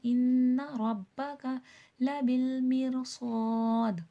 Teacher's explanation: دال میں خلخلہ واضح ہوگا